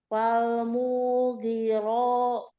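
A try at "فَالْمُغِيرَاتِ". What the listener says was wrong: Tahan. Jangan mughiro. Tapi falmughi. Mughi. Umi yang panjang ghain, bukan mu. Falmughi.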